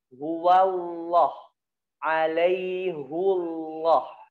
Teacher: Ya dalam keadaan tebal ya, yaitu ketika dia bersambung dengan lafaz Allah dalam keadaan fathah ya ataupun dhammah.